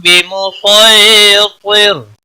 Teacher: سورۃ الغاشیہ جو ہم پڑھ رہے ہیں اس میں سین نہیں پڑھا جائے گا، سواد پڑھا جائے گا. لکھا ہوگا ضرور لیکن پڑھا جائے گا سواد.